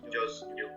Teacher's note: as just u due to the simulation because in this case the last t in just tends to become soundless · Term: assimilation